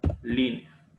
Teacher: Se separa la E y la A porque es un hiato en vocal abierta.